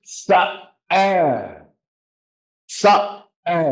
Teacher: You gotta put that glottal stop.